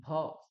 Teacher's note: কষ্ট না করার জন্য আমরা ভ এরকম করে ভলি সেটা নয় কিন্তু দুটো ঠোঁট একসঙ্গে করে ভ স্পষ্ট উচ্চারণ আসতে হবে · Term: ওষ্ঠ বর্ণ